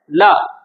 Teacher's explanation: ल को बोलने में जीभ उल्टी होकर तालु के साथ में टकराती है। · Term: पार्श्विक व्यंजन